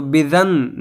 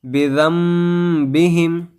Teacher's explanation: نون ساکن کے بعد با آئے تو ہم کو نون کو میم سے بدل کر پڑھنا ہے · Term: اقلاب